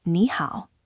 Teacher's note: this phrase consists of two third tones, which triggers the tone sandhi rule we discussed earlier. · when 2 third tones appear in a row, the first one is often pronounced with a rising contour. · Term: tone sandy